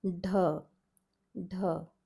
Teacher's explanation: this is the aspirated palate D